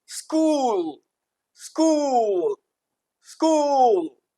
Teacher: स क और ल इन तीनों को बोल दिया सिर्फ एक वोवेल साउंड उ की मदद से।